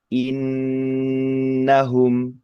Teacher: Mengingatkan lagi untuk gunah itu tidak hanya kita mengucapkannya dengan suara hidung saja, tetapi juga kita tahan bacaan dengung itu lebih lama seukuran dua atau tiga kali sukun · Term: bacaan gunah